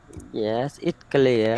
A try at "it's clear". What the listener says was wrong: It's clear. Don't forget to sounds S at the end.